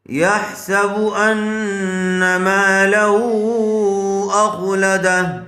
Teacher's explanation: مدہ کے بعد جب حمزہ دوسرے کلمے میں ہو تو وہاں مد منفصل کا قاعدہ ہوگا، اس کو تھوڑا زیادہ کھینچ کر پڑھا جائے گا ۔ اخ، حمزہ خا زبر اخ، لام زبر لا، اخلا، دال